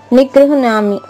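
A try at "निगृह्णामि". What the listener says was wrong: ఎందుకు అక్కడ మా చెప్పేటప్పుడు ఇక్కడ యా ఎందుకు ఎత్తుకొస్తారో నాకు తెలియడం లేదు. గృహ్ణామి చెప్పండి. గృహ్ణామి. నిగృహ్ణామి. నిగృహ్ణామి.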